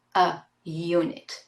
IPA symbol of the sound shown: j